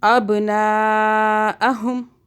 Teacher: اب بھا پہ قلقلہ کریں گے